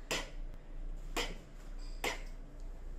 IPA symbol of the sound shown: k